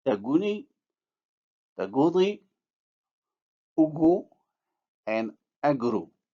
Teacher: In Tashlhit, the velar stop g is articulated with rounded lips in a word because of the presence of a rounded vowel in another morphologically related form of the same word. In other words, as we move from noun to verb, or from verb to noun, or from singular to plural, or vice versa. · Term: labialization